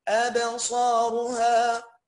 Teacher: أبصارها روها راء مفخمة ص أعلى درجة تفخيم، الألف فخمت عشان قبلها حرف الصاد، والباء زي ما هي مرققة عشان مجرد الهمزة، والهمزة أكيد مرققة.